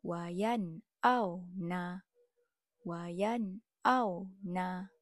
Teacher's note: Setiap huruf dibaca jelas, tiada dengung. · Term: Izhar halqi